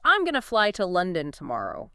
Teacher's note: You can reduce going to into gonna